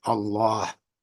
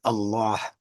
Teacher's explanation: You give it a little breathy sound for the H at the end.